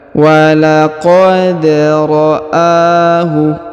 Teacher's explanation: huruf da berharokat sukun maka kita pantulkan. Wa laqad ra'ahu, huruf a dipanjangkan 2 harokat karena di atasnya terdapat alif kecil ya.